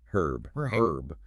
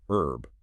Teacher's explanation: This is the decisive factor that differentiates British from American English, where the H is dropped herb, which is influenced by French vocabulary, where the H is often silent. In the UK, we retain that initial aspiration. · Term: initial H aspiration